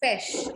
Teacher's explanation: But in French, we don't give it ch sound, we give it sh sound. So it's pesh.